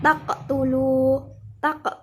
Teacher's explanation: bacaan qalqalah sugro sebab qaf mati asli